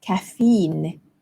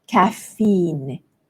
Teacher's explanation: English the stress falls on the first syllable caffeine caffeine and in American English it's caffeine the stress falls on the second syllable